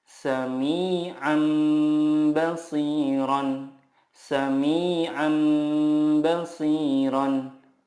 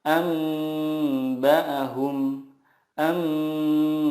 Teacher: mengganti nun sukun dengan mim sukun dan disertai gunah 2-3 harokat. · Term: iqlab